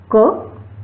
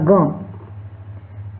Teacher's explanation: उदाहरण के लिए क वर्ण तथा ग, इनके कंठादि स्थान, दोनों वर्णों के कंठादि स्थान तथा आभ्यंतर प्रयत्न समान हैं, अतएव इनकी सवर्ण संज्ञा हो जाएगी। क तथा ग का स्थान कंठ है तथा आभ्यंतर प्रयत्न भी समान है, अतएव ये सवर्ण संज्ञा कहलाएंगे।